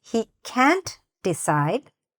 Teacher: pronouncing that negative word very clearly so it doesn't sound like he can decide instead of he can't decide stress that word